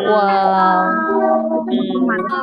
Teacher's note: সবাই মুখস্থ করেন, দুই ঠোঁট গোল করিয়া, দুই ঠোঁট গোল করিয়া ও অক্ষরটি উচ্চারিত হয়